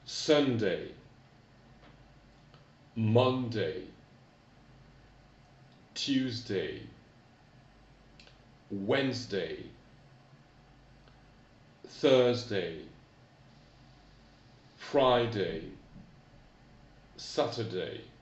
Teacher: Attention à la prononciation des jours et attention à l'accent tonique. L'accent tonique tombe toujours dans les jours de la semaine sur la première syllabe